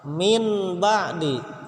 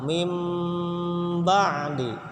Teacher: ditukar dari huruf nun sukun atau tanwin ketika bertemu dengan ba, jadi bertukar keluar suaranya jadi mim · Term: iklab